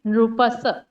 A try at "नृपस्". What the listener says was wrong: नृपस नहीं, ये स्वतः आधा है, नृपस।